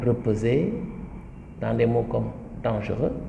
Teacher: C'est un E presque très sourd, un E, je dirais, presque muet, quoi.